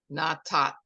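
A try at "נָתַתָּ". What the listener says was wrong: You got a vowel under there, so you have to hear all of it. But there's a vowel under it, so you have to hear that.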